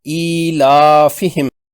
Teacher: یا ساکن سے پہلے زیر والی حمزہ ہے، اس طرح یہ بھی مد بدل ہے، 2 حرکات کھینچ کر پڑھتے ہوئے